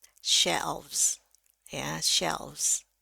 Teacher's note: ini S-nya sebetulnya berubah jadi Z